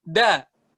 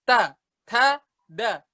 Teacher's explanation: Kalau misalnya dal, nggak ngembusin angin, nggak ada angin sama sekali. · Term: huruf dal